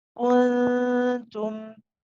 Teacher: the tip of the tongue is close to the ta, but you're not pressing on it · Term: regular ikhfa